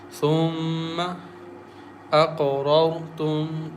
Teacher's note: Meme has shadda on it, so we recite with nasal sound with gunna